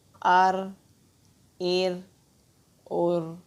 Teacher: را کے اوپر یا را کے اوپر جب جزم ہو، اس سے پہلے زبر یا پیش ہو تو ہم را کو موٹا پڑھتے ہیں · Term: را کو ہم موٹا